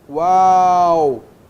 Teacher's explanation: É só você pensar o seguinte, ó, em qual. Você tem a semivogal u, a vogal a.